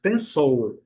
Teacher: o L em inglês, ele é pronunciado com a letra no céu da boca, né, fazendo uma subida. Pencil. O I vai ter o som do schwa.